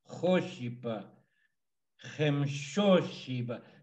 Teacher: So the accent's always on the O.